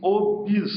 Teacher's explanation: para produzirmos a palavra precisaremos desse pequenino I como som entre a letra B e a letra S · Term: fone I